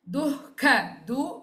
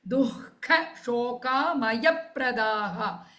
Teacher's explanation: visarga followed by kha, so ih sound then kha mahaprana